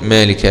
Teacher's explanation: لا ما حركتين بس مد طبيعي